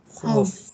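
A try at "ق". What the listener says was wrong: Saya rasa tak dekat pangkal dalam auf. Bukan kaf, auf. Auf.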